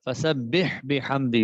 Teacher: فسبح اس میں ایک تو سین کی سیٹی نکالنا ضروری ہے، اور ہا کیونکہ فسبح بھی حمدی پڑھا جائے گا، یہ خطا ہے، ٹھیک نہیں ہے.